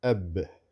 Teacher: That is qalqala on the ba because it's sakin. Right? As I explained to you, it's actually abun, which can also become abin or aban.